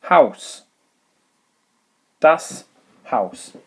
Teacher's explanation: The AU sound is an ow sound, not an oi sound as you saw over here in Freund, but ow, as in ow, you've just stood on my toe.